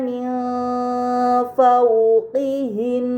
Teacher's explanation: Kemudian pada kata min fawqihin terdapat nun sukun bertemu dengan huruf fa. Ini dinamakan ikhfa hakiki. Maka nun sukun dibaca secara samar dengan gunnah yang dipanjangkan.